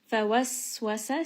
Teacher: And then end on a 4-count med. فوسوس, Sin is going to have safir, it has a little bit of that whistle.